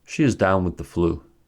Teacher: the adverb carries the main stress and the verb carries the secondary stress there is no rhythmic stress shift since the adverb is immediately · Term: three-part phrasal verbs